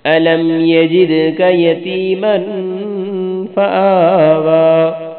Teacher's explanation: یتیمن، مین پہ غنہ کرنا ہے